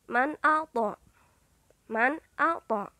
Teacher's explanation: bunyi nun sukun atau tanwin dibaca dengan jelas, terang, pendek, tidak samar, dan tidak pula berdengung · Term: idhar halqi